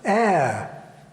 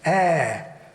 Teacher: the vowel in the word square was a diphthong a changing vowel air in SSB it's a monophthong with a steady unchanging Quality